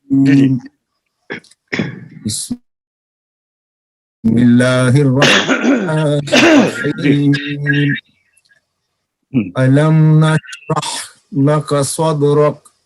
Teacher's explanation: تعوذ کو علیحدہ سانس میں، تسمیہ کو علیحدہ سانس میں، اور سورت کا آغاز علیحدہ سانس میں کرنا، اس کو فصل جمی کہتے ہیں